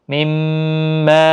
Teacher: مِمَّا یہاں پر میم مشدد پر غنہ ہوگا، پھر کھینچ کر بھی پڑھیں گے 3 الف کی مقدار کے برابر، مد منفصل بھی ہے۔